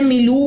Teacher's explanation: ملو واو مد ہے 2 کاؤنٹس لمبا کیجئے